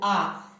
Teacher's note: स्वर आ को जब हम बोलते हैं तो पूरा मुंह जो है हमारा खुल जाता है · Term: विवृत